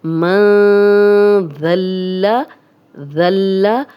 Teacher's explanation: ذال نرم حروف بھی ہے، سیٹی کی آواز نہیں آئے گی، غنہ بھی کریں گے